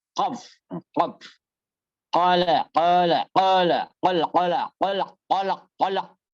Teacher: Berasal dari Kalau belakang. qaf berarti letupannya di belakang